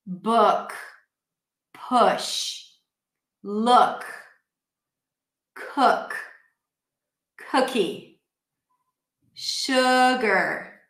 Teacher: from the tense oo, food, I drop the jaw, again, that tense and relaxed pair, right?